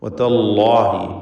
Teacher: അള്ളാഹ് എന്ന ഇസ്മുൽ ജലാല അതിലുള്ള ലാമിനെ തഫ്ഖീം ചെയ്യണം. വതല്ലാഹി, ലാമ് അതിൻ്റെ മഖ്റജിൽ നിന്ന് തന്നെ ഉച്ചരിക്കുക.